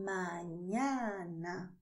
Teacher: a nasalização é suave quase imperceptível